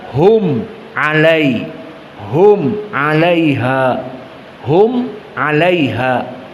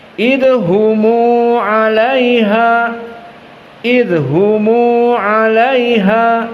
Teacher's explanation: tidak diidharkan hum 'alaiha, tetapi mimnya disukunkan dan dijadikan dua harokat. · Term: silatul mim